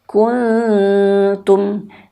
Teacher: nun mati jumpa ta ini juga sama ikhfa. Tapi bunyinya jangan menjadi eng. Bunyinya persiapan ke huruf ta.